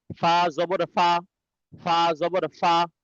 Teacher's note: ফা উচ্চারণ নিয়ম হচ্ছে নিচের ঠোঁটের পেট, উপরের দুই দাঁত, দুই দাঁতের সঙ্গে লাগবে ফা